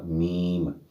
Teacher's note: दोनों होंठों को बा की तरह जोड़ेंगे तो मीम अदा होगा